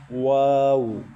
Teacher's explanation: دونوں ہونٹوں کو گول کریں، واو یہ ادا ہوگا، یا وا، وا یا واو دونوں پڑھ سکتے ہیں.